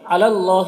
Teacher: یہاں پر اللہ کے لام کو پر پڑھیں گے